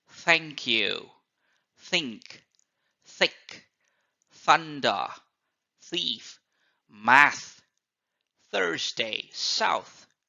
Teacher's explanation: cat poet technique teach call so these are the pataka sounds th sound can be produced by sticking out your tongue when you pronounce these words and blowing air ever so slightly